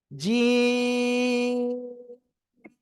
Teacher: জিব্বার মাঝখান, তার বরাবর উপরে তালুর সাথে লাগবে, লাগিয়ে উচ্চারণ করব শক্ত আওয়াজে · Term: জিম